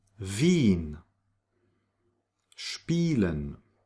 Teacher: the combination IE is pronounced like E, it's a long E